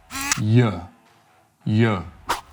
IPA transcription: j